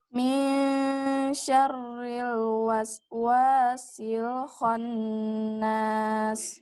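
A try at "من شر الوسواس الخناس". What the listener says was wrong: Masya Allah, tinggal di wasnya. Panjangkan sinnya. Rohawah namanya. Mengalir. Memanjangkan suara.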